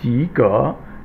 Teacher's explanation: And the next one is 及格, both second tone, 及, second tone, 格, second tone is a rising tone